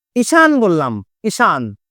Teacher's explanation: এখন এই যে দীর্ঘ ইকার, এর তো থাকার ক্ষমতা নাই, সে কিসে কনভার্ট হবে? হ্রস্ব ইকারে, ঈশান হয়ে যাবে।